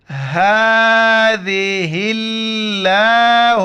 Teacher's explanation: ہا کو جو ہے نا گلے سے ادا نہیں کریں گے، منہ سے جیسے ہوا نکالتے ہیں ایسے ہی ادا کرنا ہے۔ اس کے اوپر کڑا زبر ہے، ایک الف کے مقدار کھینچنا ہے، ذال کے وقت زبان باہر نکالنا ہے۔